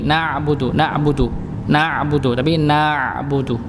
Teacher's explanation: Ada diseret sedikit gitu nggih huruf ainnya.